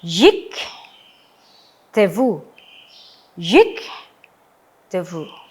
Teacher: Nah, sekarang kembali lagi apabila, ya, eh sewa itu eh berjejer seperti tadi yang sudah kita pelajari, ya. Sewa yang pertama, ya, kita perlakukan sebagai silent sewa. Sewa yang kedua kita perlakukan sebagai moving sewa.